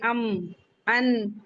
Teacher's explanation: नाक में थोड़ी देर आवाज रोकना गुना कहलाता है। तो ये जब हम नाक के अंदर आवाज रखते हैं गुना का लुगवी माना होता है बिनबिनाहट बजिंग साउंड हमिंग साउंड।